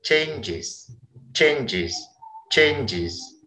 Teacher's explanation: Contoh kata change yang berakhiran suara j, mendapat imbuhan akhir is, dibacanya changes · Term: suara is